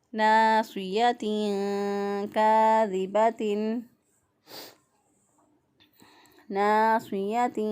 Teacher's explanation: تو صاد کے نیچے چونکہ زیر ہے اس لیے یہ جو ہے وہ اس کو موٹا ہی پڑھیں گے، چاہے زیر ہو، چاہے زبر ہو، چاہے پیش ہو، ہر صورت میں یہ موٹے پڑے جاتے ہیں۔